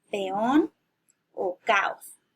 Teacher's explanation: son dos vocales seguidas que forman dos sílabas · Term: hiato